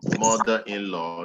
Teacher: if it is a noun compound word, the stress is coming also on the first syllable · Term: compound stress